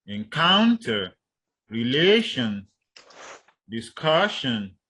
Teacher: You have words on the stress on the second syllable